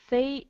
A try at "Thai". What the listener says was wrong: Okay, this word here we pronounce Thai. Thai. H is silent. The H is silent. We said Thai. Thai as in short for Thailand.